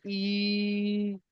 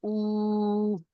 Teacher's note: হুরুফে মাদ্দার মতো একালিফ পরিমাণ টান দিয়ে পড়তে হবে